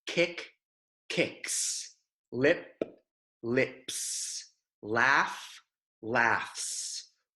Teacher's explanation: when the last sound of a word is unvoiced that s at the end of the word will sound like what Americans would think of as a true s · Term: unvoiced words